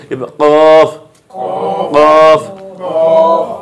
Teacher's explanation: জিহ্বার গোড়া, জিহ্বার গোড়া, এই জিহ্বার গোড়া, এই যে এটা জিহ্বা ধরেন, হ্যাঁ, এই জিহ্বার গোড়া উপরে তালুর সঙ্গে লাগায়